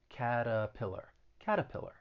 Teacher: that t i'm going to use a flat t and that second syllable has that schwa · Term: flap T